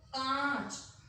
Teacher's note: उच्चारण में समय ज्यादा लगेगा और आवाज जो है वो नाक से होते हुए गले से बाहर निकलेगी